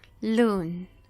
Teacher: E aqui o stress, essa parte mais forte, a tônica, ela vai ficar justamente na segunda sílaba.